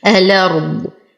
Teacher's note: أصل الكلمة الأرض بتحقيق الهمز، لكن ورش يقوم بحذف الهمزة ونقل حركتها للساكن الذي قبلها وهي اللام القمرية، فتصبح الأرض، تحرك بالفتح لأنه حركة الهمزة. نفخم الراء، نعطي الضاد أقل درجات التفخيم